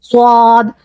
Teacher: और जो हमारे होठ है थोड़े से गोल हो जाएंगे